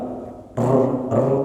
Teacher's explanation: ro itu punya sifat takriir bergetar namun tidak nampak